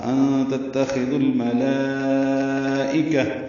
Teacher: مد متصلہ کھڑا زبر کے بعد حمزہ ایک ہی کلمے میں آنے کی وجہ سے لام کو لمبا کریں گے 4 حرکات سے زیادہ